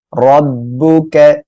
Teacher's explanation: র উপরে জবর মোটা করে পড়বেন